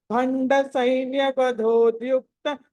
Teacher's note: శక్తి విక్రమహర్షిత okay ఆ అక్కడ దగ్గర త దీర్ఘం తీసుకున్నారు దీర్ఘం వినిపిస్తుంది దీర్ఘం లేదు అక్కడ యుక్త అని కట్ చేసినట్టు చేయాలి తా అని దీర్ఘం వినిపించకూడదు ఓకే మళ్ళీ భండ సైన్య వధోద్యుక్త శక్తి విక్రమ హర్షిత భండ్యక్త శక్తి విక్రమర్షిత · దీర్ఘం లేదు అక్కడ, ద్యుక్త అని కట్ చేసినట్టు చెయ్యాలి, తా అని దీర్ఘం వినిపించకూడదు